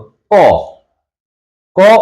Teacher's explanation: বদ্ধ হয়ে থাকে যেমন আমরা উচ্চারণ ক উচ্চারণের সময় কি হচ্ছে ক উচ্চারণের সময় বাতাসটা এসে আমাদের এই পশ্চাৎ জিহবার নিচের যে জায়গাটি রয়েছে সেখানে এসে বাতাসটা কিন্তু রুদ্ধ হচ্ছে হওয়ার পরে ফট করে একটা দ্রুত বাতাসটা বের হয়ে গিয়ে ধ্বনিটা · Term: স্পৃষ্ট ব্যঞ্জন ধ্বনি